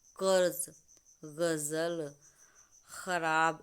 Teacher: इनका उच्चारण जिह्वा के मूल यानी जहाँ से जिह्वा हमारे कंठ में जुड़ी हुई है उसके जड़ से आवाज़ आ रही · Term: जिह्वा मूल